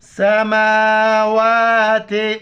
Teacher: میم کے اوپر کڑا زبر ہے، واف کے اوپر کڑا زبر، ایک الف مقدار کھینچنا ہے